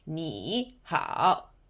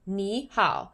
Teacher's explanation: So the first tone changes to a second tone when next to a third tone.